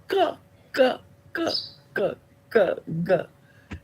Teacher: Now you need to say something is touching something, but it's not the front of the tongue. So it is the back of the tongue touching the soft palate. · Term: velar sound